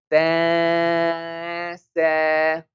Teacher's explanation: we hide the sound of noon into our nose. This is called ikhfa.